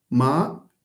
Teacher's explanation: without rising or falling, it's neutral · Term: high level tone